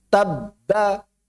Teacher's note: Suara terputus tapi tidak dilepas.